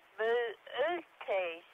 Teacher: And the correct pronunciation is Bootes, with each O pronounced separately and the accent on the second syllable